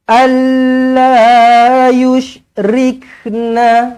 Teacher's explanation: nun kosong bertemu dengan lam sabdu, jumpa dengan lam sabdu, tak payah dengung, masukkan sahaja idgham bila gunnah